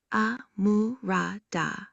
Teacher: Amurada, pronounced amurada, high, mid, low, high tone, essentially means rich or sufficient